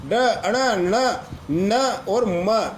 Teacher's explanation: इनको नासिक्य यानी नासिका से उच्चारित होने वाले व्यंजन बोलते हैं।